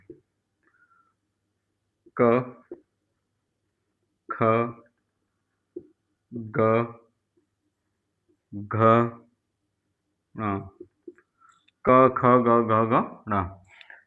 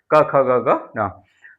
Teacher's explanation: व्यंजनों का उच्चारण करते समय जीभ का पिछला हिस्सा कंठ को स्पर्श करता है। यानी आप बोलेंगे क तो देखिएगा कंठ कंठ से आपकी आवाज आ रही है तो नहीं कंठ को स्पर्श करता है। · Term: कंठीय व्यंजन